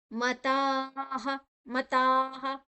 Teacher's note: ತ ಆದನಂತರ ಅಲ್ಲಿ ವಿಸರ್ಗದ ಉಚ್ಚಾರಣೆ ಹ